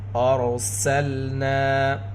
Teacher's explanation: رائے ساکنہ سے پہلے زبر، رائے ساکنہ سے پہلے پیش ہو تو را کو پر پڑھیں گے، رائے ساکنہ سے پہلے زیر ہو تو را کو باریک پڑھیں گے۔ ارسلنا، یہاں پر را پر ہوگی، رائے ساکنہ سے پہلے زبر، نون میں الف مد، الف سے پہلے زبر، نون کی آواز کو دو حرکت کے برابر کھینچ کر پڑھیں گے۔